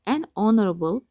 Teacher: Çünki burada H tələffüz olunmur